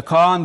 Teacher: birinci heceleri uzun mesela Kaan diyoruz ama Eee kaanı uzatıyoruz Hatta uzattığımız için ortadaki yumuşak G düşüyor Kaan oluyor